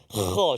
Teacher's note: Huruf kha terletak di dalam rongga kerongkongan kita ni di paling awal lah.